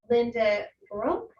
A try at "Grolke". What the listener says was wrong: you can pronounce the E, Grolke.